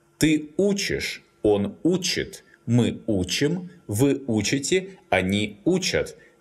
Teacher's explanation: The stress falls on the stem.